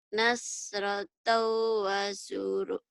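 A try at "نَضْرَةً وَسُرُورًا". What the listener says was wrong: Nad bukan nas. Do. Nadratau. Nadratau. Ro. Dua patah dibaca satu mad iwad. Nadratau wa surur. Mad iwad dua patah.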